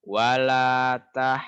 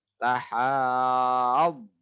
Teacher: Setelah panjang haknya, kemudian dodnya ada tasdid. Setiap ada tasdid, ditekan, kemudian ditahan.